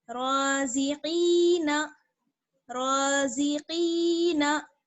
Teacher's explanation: अब देखिए जा को तो बिल्कुल नहीं खींचना है ना, क्योंकि जा के आगे या नहीं है, जा को जल्दी से पढ़ेंगे, रोजी। काफ को खींचेंगे क्योंकि काफ में जो है या मद्दा जुड़ी हुई है